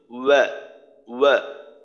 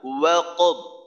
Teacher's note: ওয়াও জবর ওয়া, একেবারেই ঠোঁট গোল হবে, একেবারেই যতটা গোল করা সম্ভব ঠোঁটটাকে গোল করে মাঝখানে অল্প একটু ফাঁকা রাখতে হবে। অর্থাৎ মনে করেন আমরা ফু দেই না, ফু দিয়ে মনে করেন একটা মোমবাতি নিভানোর সময় যেভাবে ঠোঁটটাকে গোল করে ফু দেই, ওইভাবে গোল করে ওয়াওয়ের উচ্চারণটা শুরু করতে হবে।